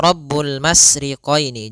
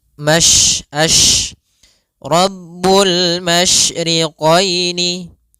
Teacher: Tafasiyi adalah salah satu sifat yang terkandung di dalam huruf syin yaitu menyebarnya suara. Sehingga jangan dibaca rabbul masriqini. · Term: tafasyi